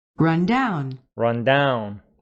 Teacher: Run down with stress on the second syllable. Down, I mean.